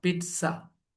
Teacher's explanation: we pronounce them not with z sound with t and s sound